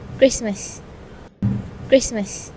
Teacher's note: The standard form of pronunciation for this word is Christmas, but the participant pronounced it as Christmas. The t sound between the s and m sound was omitted, which is a typical elision in this word. This sound is often dropped due to the difficulty of transitioning from s to m sound quickly.